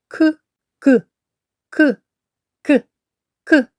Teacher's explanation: цей звук не можемо довго протягнути він приголосний вимовляється твердо